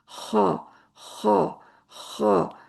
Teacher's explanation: جب صحیح ادا کرنا ہو تو حلق میں ہلکی سی خرخراہٹ بھی ہوگی، بھاری پن بھی محسوس ہوگا · خا بھاری حرف ہے، اور حلق کے ساتھ رگڑ لگنے سے آواز نکلتی ہے۔